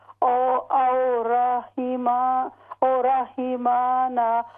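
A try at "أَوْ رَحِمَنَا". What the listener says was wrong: نہیں یہ دو لفظ ہیں یہاں پر. او علیحدہ ہے. رحمنا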